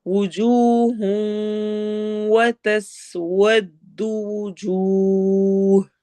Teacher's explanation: تس سین میں سٹی والی آواز ہوگی